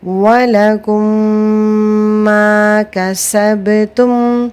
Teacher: یہاں پر بھی غنہ ہے، ادغام شفوی کا رول ہے یہاں پر، اور غنہ کی جو مقدار ہے وہ 1 الف کے برابر ہوتی ہے۔ ہم اس غنہ کو 1 الف کے برابر کھینچ کر پڑھیں گے